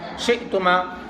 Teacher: حمزہ ساکن ہمیشہ جھٹکے کے ساتھ پڑھا جاتا ہے